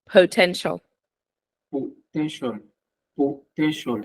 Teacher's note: potential potential you just pressed the syllable 10 by saying potential but the stressed syllable is po